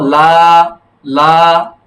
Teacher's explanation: লাটা নিচে যাবে না, নিচে গেলে নাকে চলে যাবে। লা উপরের দিকে যাবে, উপরের দিকে।